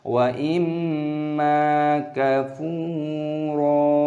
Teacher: Di sini perhatikan wa imma, ada mim tashdid, ini dilantunkan terlebih dahulu, ghunnah, lalu panjangkan mim, ada tanda alif, wa imma kafuro, fa dibaca panjang, ada wawu sukun, panjangkan selama dua ketukan,